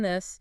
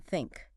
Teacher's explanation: there are two thus sounds there's the voiced one like in this and the unvoiced one like in think